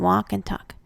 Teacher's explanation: in some a words the L is silent and the sound of a is modified as in walk and talk the words are and before have